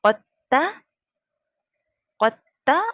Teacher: अब हमने दाल को साइलेंट कर दिया, क़त्ता, क़ाफ को डायरेक्टली ता के साथ मिला दिया।